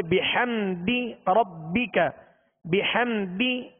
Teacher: دال کو کھینچیں گے نہیں، دال کے نیچے زیر ہے، لہذا آواز کو گرا کر ادا کریں گے